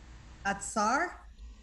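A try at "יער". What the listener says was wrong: almost, We haven't learned the tsa sound yet. Ya'ar.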